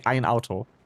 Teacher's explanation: And in Swiss German, you would say ein Auto. And that subtle stop in ein Auto compared to ein Auto is a glottal stop